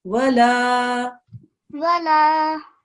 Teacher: this is a lam followed by an alif madda, 2 seconds. So this should be read as wala.